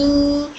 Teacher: दोनों होठ बंद होकर दोनों होठों का ऊपर का वेट वाला पार्ट टच होकर हर मीम अदा होता है। दोनों होठ एक दूसरे से लाइटली टच होते हैं और नाक से भी आवाज निकलती है।